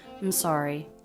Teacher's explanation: In the I am contraction, people will take just the M sound and link it on to the next word.